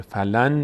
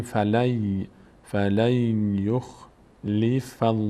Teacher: مهم اینه که نون تلفظ نمیشه